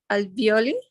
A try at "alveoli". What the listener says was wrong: Perfect, alveoli.